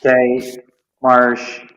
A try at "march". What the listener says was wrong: No, you're saying marsh. March.